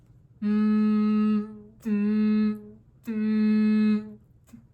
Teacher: for this sound, the air is coming out of your nose